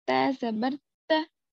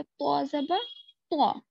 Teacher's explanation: त को पढ़ना है तो हम त पढ़ते हैं, लेकिन त्वा को पढ़ना है तो थोड़ा सा मोटा पढ़ते हैं, क्योंकि त्वा हुरूफ मुस्तालिया में से है, ता बारीक पढ़े जाने वाले हुरूफ में से है।